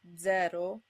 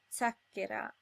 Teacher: The two possible pronunciations of Z are Z as in zero or Ts as in zacchera.